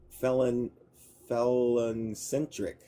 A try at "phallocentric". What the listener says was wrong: There's no N. It's phallocentric.